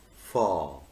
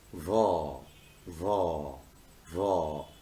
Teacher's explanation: you will not feel any vibration. But if you pronounce va, va, va, you will feel a kind of vibration.